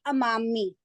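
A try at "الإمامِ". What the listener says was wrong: अमामी। हाँ, बहुत ख्याल करें, अमामी तो ये गलत हो जाएगा। इमामी।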